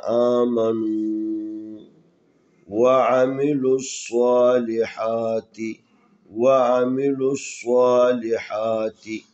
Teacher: ان الذین آمنوا، یہاں واو حروف مدی میں سے ساکن ہے، اس سے پہلے نون کے اوپر پیش ہے جو واو کی مناسب حرکت ہے، لہذا واو کو ایک الف کے برابر کھینچنا